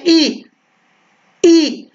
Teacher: जब बोलते हैं ई तो तालु पर जोर आता है